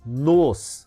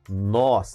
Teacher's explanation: Veja que o nos é um monossílabo átono, enquanto nós é um monossílabo tônico.